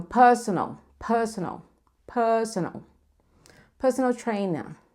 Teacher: Já se for no britânico, lembra que o R é brando. A gente muitas vezes nem pronuncia ele.